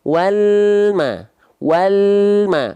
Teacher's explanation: bunyi lam sukun itu bunyi konsonan walma bukan bunyi vokal e · Kenapa lam sukun itu suka ada bunyi pantulannya karena lidah kita ya makhraj lamnya keburu turun duluan sedangkan huruf berikutnya teman-teman enggak langsung lafalkan